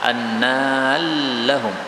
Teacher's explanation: ro ketemu lam boleh idgham